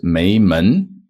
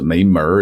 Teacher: this AR is like a sort of Northern Beijing kind of thing that makes things more casual